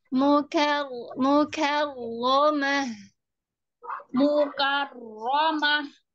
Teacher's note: kafnya tipis ada udaranya